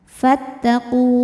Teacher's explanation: Jika berhenti di ku, hukumnya adalah mad tabi'i. Sebab ada waw mati didahului harokat dhammah. Maka qafnya ini panjang 2 harokat. Fattaqu. Berhenti panjang 2 harokat.